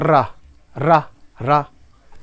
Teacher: कंपन सा आ रहा है, इसीलिए इसे प्रकंपित बोलते हैं